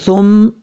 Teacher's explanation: ثا کا جو مخرج ہے اس کا مخرج ہے زبان کا سیدھا اوپر والے دانتوں کے اندرونی کنارے سے لگے